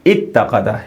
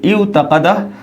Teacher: वाव को ता किया और फिर दोनों ता का इदगाम कर दिया। इदगाम कहते हैं मिलाने को।